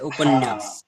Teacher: जब बोलते हैं तो इसमें डबल न का साउंड आता है